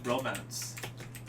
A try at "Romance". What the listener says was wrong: Bromance? It's called Romance. You said bromance. You said bromance.